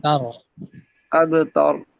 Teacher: تا پر فتح ہے، زبر ہے، اس را کو موٹا پڑھا جائے گا. اب تر، تا پر زبر ہے، را ساکن ہے، تو را کو پر پڑھیں